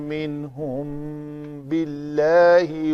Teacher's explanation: میم ساکن کے بعد حرف با آیا ہے تو اس سے یہاں پہ اخفاء شفوی ہوگا